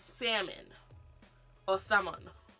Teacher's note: Please stop pronouncing the L in salmon.